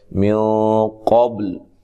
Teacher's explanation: قاف بھی موٹا ہے، قاف موٹا ادا کرنا ہے، با پہ قلقلہ کرنا ہے۔ وقف کی صورت میں لام بھی ساکن ہے۔ · یہاں نون ساکن کا اخفا مع الغنہ ہے، موٹا اخفا ہے، اور قاف بھی موٹا ہے، قاف موٹا ادا کرنا ہے، با پہ قلقلہ کرنا ہے۔